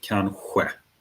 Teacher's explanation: So you have a sh sound variant as well. But in the south, you'd probably pronounce it kanske, which is further back in the mouth.